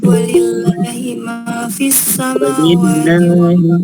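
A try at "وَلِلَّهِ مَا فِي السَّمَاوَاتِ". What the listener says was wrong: Allahnya panjang. Allahnya panjang.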